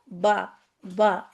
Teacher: दोनों होठों के तर हिस्से मिलने से बा अदा होता है। तो बस होठ को बा ऐसे रख लें।